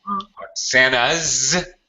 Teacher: Oksana's with a Z sound. Your name ends with a vowel.